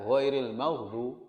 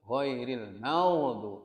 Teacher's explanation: Ghain mengalir suara saja, angin tidak.